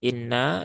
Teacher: Ghunah musyaddadah ditahan dulu tiga harakat